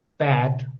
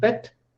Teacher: So when I say pat, then you can see my mouth is more open, and when I say pet, then less open.